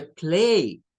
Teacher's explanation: No es que eso suene a una a y una I Eso suena a una e y una I del inglés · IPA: /eɪ/